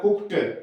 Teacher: इसमें ईडी लगा दिया तो ये कुकड नहीं बोलेगा, ये बोलेगा कुक्ड, ट बोलता है